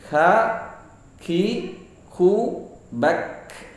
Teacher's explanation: Sa, ini deras sekali napas yang keluar. Nah, huruf ka sedikit sekali yang keluar atau sedikit mengalirnya, tetap mengalir dan sedikit.